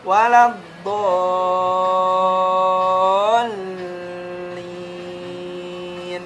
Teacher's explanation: Do itu mad, di depannya ada huruf lam bertasydid. Makanya jadi panjang 6 harkat. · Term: mad lazim mustaqal kalimi